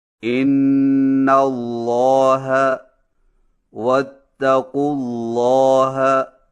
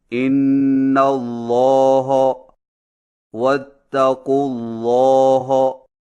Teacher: لام کو موٹا کرنے کے ساتھ ہا کو موٹا نہ کریں۔ مثلا ان اللہ واتقوا اللہ کو اس طرح نہ پڑھیں ان اللہ واتقوا اللہ۔